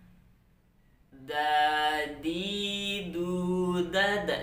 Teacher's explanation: Da, di, du, da, da. Jadi ujung lidah dengan akar gigi seri, pangkal gigi seri. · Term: huruf dal